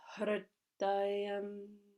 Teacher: You don't roll the R, but you bring the tongue up for the hr. It points up to the roof of the mouth. Hridayam. It goes up and then it comes down for the D, which has to touch the teeth.